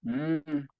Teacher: nada más que se ocupa la nariz y suena m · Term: nasal